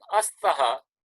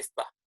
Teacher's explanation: The akara is dropped. So instead of saying astaha, as plus taha, astaha, we just say sta.